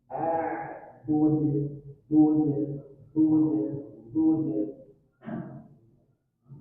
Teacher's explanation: Dan karena di akhir ayat maka berlaku hukum qalqalah kubro. Sangat kelihatan pantulannya.